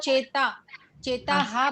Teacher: એ તાની બાજુમાં જે ડોટ બે આપેલા છે એ વિસર્ગનો ઉચ્ચાર હા થશે.